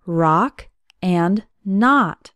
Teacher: the letter O has an AA sound as in the words rock and not